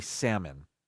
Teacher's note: this wrong too I've been using the L it's not salmon it's salmon without the L the L is silent